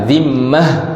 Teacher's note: Bila mana kita berhenti tak ada bunyi ta, jadi bunyi ha, dia berbunyi dengan ha, dhimmah.